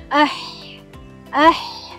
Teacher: tengah kerongkong pula keluar daripadanya huruf ain dan huruf ha